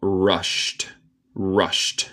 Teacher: El ed suena como T en este caso.